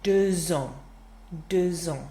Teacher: that X changes to a Z sound to make a nice liaison with the word starting with a vowel next to it